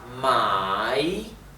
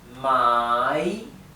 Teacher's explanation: el tono es cae y sube